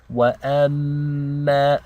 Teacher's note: we have a meme with a shadda. This means we have to do ghunna for 2 counts.